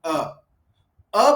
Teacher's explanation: अ बोलते समय हमारी जीभ कहीं नहीं जाती। वो मध्य में ही पड़ी रहती है। तो इसको मध्य स्वर बोला।